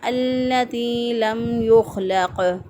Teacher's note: خا جو ہے یہاں پر قلقلہ نہیں ہونا چاہیے، یہاں پہ خا کو سادہ ادا کریں گے اور موٹا ادا کریں گے التی لم یخلق۔